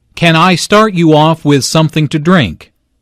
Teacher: with something to drink notice how the question starts with can since this is a yes no question the intonation Rises at the end